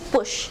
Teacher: It is described as a voiceless bilabial plosive consonant.